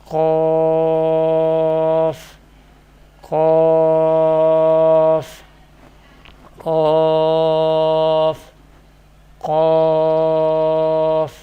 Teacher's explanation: This Musta'liyah letter will be pronounced from the roots of the tongue and the soft palate.